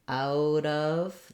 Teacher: in Connected speech we rarely say out of at at a minimum we would link it together and say out of that t would become a flap out